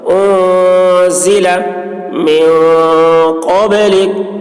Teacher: نون میں اخفا ہوگا، اور قاف کی آواز موٹی ہوگی، با میں قلقلہ، با بھی حروف قلقلہ میں سے ہے، اس پر جزم ہے تو با میں قلقلہ، جیسے قب، قب، آواز ٹکرائے گی۔